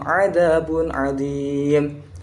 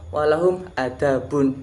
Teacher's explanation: Yang dimana pada walahum 'adzabun itu dibaca walahum adabun. Nah, huruf ainnya diganti menjadi alif, dimana alif kan tidak ditekan dalam melafalkannya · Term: ain menjadi alif